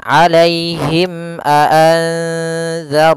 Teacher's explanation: Yaitu apabila adanya bib mati bertemu dengan seluruh huruf hijaiyah kecuali mim dan ba, maka dia dinamakan dengan izhar syafawi. Maka suara mimnya harus jelas dan tidak boleh ditahan.